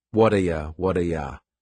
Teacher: that t at the end of the word what is going to change to a d sound. This is really typical of American English where a t that's surrounded by vowel sounds is going to change to a d.